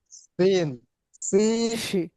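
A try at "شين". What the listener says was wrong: শি শিন। শিন। সিন না, একটু সিন শোনা যায়। শিন। শিন।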